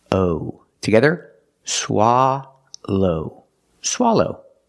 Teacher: like stop and hot SWA for the first syllable SWA low the second syllable is the long o like no and go